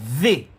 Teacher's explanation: if you put your finger upon your throat and you say the, you're gonna feel a slight little vibration. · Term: voice